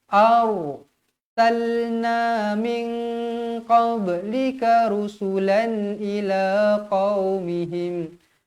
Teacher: Ra mati ni dibaca tebal sebab sebelum huruf ra mati ni berbaris atas.